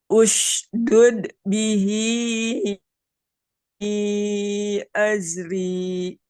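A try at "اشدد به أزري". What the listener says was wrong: Ini dudnya mantunya kurang lepas. Ushdud. Dud. Gitu. Jangan ditahan. Ushdud. Nah, tapi ushdud keluar.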